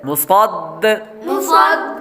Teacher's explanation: میم کے بعد صاد حروف مستعلیہ میں سے ہے اس لیے صاد کو پر یعنی موٹا پڑھیں گے. آگے دال حروف قلقلہ میں سے آ رہا ہے اس لیے قلقلہ کریں گے.